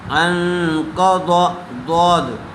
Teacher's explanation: قاف زبر قا، انقا، ضا زبر ضا، انقضا، ضا ہا زبر ضا، را زبر را، ظہرا، کاف زبر کا، ظہرک، ووضعنا عنك وزرك الذي انقض ظهرك، انقض، ضاد، ضاد کے اوپر زبر ہے، اس لیے ضاد کو جلدی پڑھیں گے اور ضاد کو پر کر کے پڑھیں گے